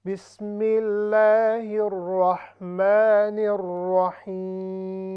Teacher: too much nasal sound, there is no need for it